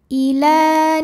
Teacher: kamaa Ili muqar karena ada huruf lam dengan baris fathah ber cara bacanya dipanjangkan lamnya dua harakat